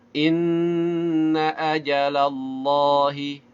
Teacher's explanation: Inna ajalallahi, inna gunnah musyaddadah, jangan lupa ditahan suaranya · Allahnya dibaca tafkhim. Karena apa? Sebelumnya ada fathah. Dan juga jangan lupa setiap lafaz Allah dibaca 2 harokat ketika wasal, dibaca 4 atau 5 harokat ketika waqaf.